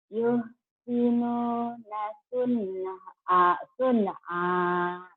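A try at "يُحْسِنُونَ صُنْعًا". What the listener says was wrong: Sunnya jangan panjang, benar idhar di situ ya. Nun mati itu ketemu ain.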